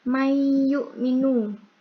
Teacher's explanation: nun sukun bertemu dengan ya itu idgham bigunah, bacanya dengung